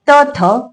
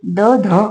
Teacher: त, थ कठोर आहे, द ध मृदू आहे आणि न हे अनुनासिक आहे